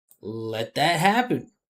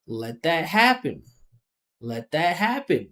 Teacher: Listen to how there's two rises in pitch. Let and happen.